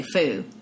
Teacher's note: deletion of the final consonant is something that you see a lot so the word f-o-o-d might say they might say foo okay